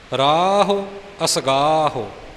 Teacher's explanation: ਔਂਕੜ ਦੀ ਆਵਾਜ਼ ਦੇਣੀ, ਪਰ ਹੋੜਾ ਨਹੀਂ ਬਣਨ ਦੇਣਾ। ਫਿਰ ਬੇਨਤੀ ਕਿ ਜਦੋਂ ਕੰਨੇ ਨੂੰ ਥੋੜ੍ਹਾ ਜਿਹਾ ਵਕਤ ਵੱਧ ਦੇ ਦੇਵਾਂਗੇ ਤਾਂ ਔਂਕੜ ਦਾ ਉਚਾਰਨ ਆਪੇ ਸਹੀ ਹੋ ਜਾਵੇਗਾ।